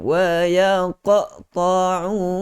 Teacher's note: Lantunan yang kecil, qalqalah sughra, mestilah dilantunkan dengan seolah-olah kita dengar seperti ada baris. Okey, bukan kita matikan.